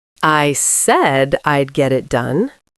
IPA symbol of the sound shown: e